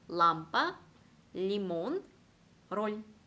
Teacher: 정말 바람 소리라고는 들어볼 수 없는 꽉 찬 소리 L가 발음이 됩니다.